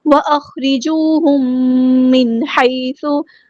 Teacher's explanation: میم ساکن کے بعد میم آیا ہے، ادغام شفوی ہو رہا ہے، ایک الف یعنی 2 کاؤنٹس یہاں پہ رکنا ہے